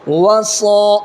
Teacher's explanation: الف مدہ کی مقدار ایک الف برابر ہے، یعنی 1 سیکنڈ کھینچنا ہے اس کو